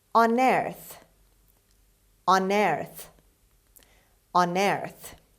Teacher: their stress is on the second syllable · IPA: /ʌnˈɜːrθ/